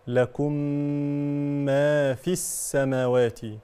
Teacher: الميم الساكنه جاء بعدها ميم متحركه فالحكم هنا ادغام مثلين صغير هكذا لكم مع الغنه بمقدار حركتان لكم ما في السماوات لو